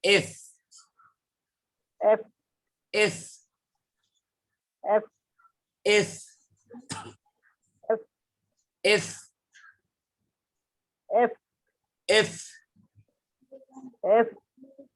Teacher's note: C C C C C C C C D D D D D D D D E ই ই ই ই E এফ এফ এফ এফ আপনি দেখেন ফ, এই যে দেখেন ফ, আমার ঠোঁটের দিয়ে তাকাবেন, সামনের মাড়ির দাঁত উপরের মানে কি বলে এটাকে, সামনের উপরের মাড়ির দাঁতের আগা নিচের ঠোঁটের পেটের সঙ্গে লাগা বলতে হবে